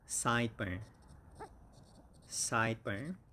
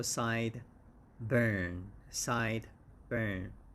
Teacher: And the stress is on the first syllable